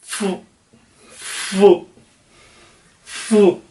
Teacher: दोनों बोले इसी तरह जाएंगे, नीचे वाला होठ और ऊपर वाले दांत मिला के। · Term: लेबियोडेंटल